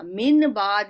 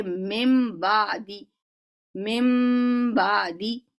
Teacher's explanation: नून की आवाज को मीम में बदलकर एक अलिफ के बराबर गुन्ना करके अदायगी की जाती है। नून की अदायगी नहीं की जाती उसकी, बल्कि आवाज को با کی آواز سے بدل دیا جاتا ہے۔